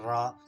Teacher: तो प्रकंपित या कंपन जात रा होता है, जिसको बोलते हैं तो कंपन सा होता है रा जब उच्चारण करते हैं आप